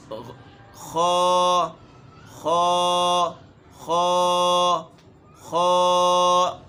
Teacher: گلے کے اس حصے سے ادا ہوتے ہیں جو منہ کی طرف سے ہیں۔